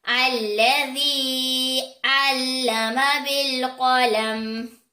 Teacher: یا سے پہلے زیر آ جانے کی وجہ سے یہاں پر یا مدہ ہو رہا ہے، اس کو ہم 1 الف کے برابر کھینچ کر پڑھیں گے۔ قاف حروف مستعلیہ میں سے ہے، موٹا پڑھا جانے والا حروف ہے۔